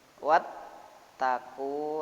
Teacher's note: Ya, ada penekanan. Karena bacanya idgham, huruf yang berganda harus ada tekanannya.